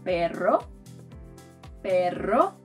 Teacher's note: The second sound is called a trill, it's basically a double r